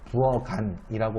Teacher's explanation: 예를 들면은 부, 억, 안 같은 경우에 부억한이라고 안 해요. 키읔을 기역으로 바꿔서 부어간이라고 발음을 해야 되거든